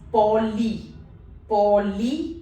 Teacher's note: As we have discussed earlier, Y is also a vowel in French. So I and Y both have the similar pronunciation, that is E in meat, a longer E. So the word over here becomes poly.